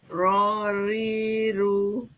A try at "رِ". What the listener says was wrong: Yang rinya ketebalan Bu. Kalau ri ro ri itu tebal. Ri ri aja biasa.